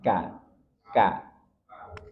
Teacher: Kaf dia pangkal lidah tetapi agak maju sedikit dari makhraj huruf q